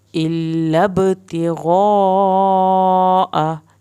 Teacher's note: یہاں پر الب با کا کلکلا ہو رہا ہے